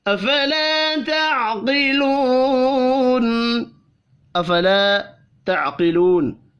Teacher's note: الف اور واو مدہ ایک ایک الف کے برابر کھینچ کر پڑھے جائیں گے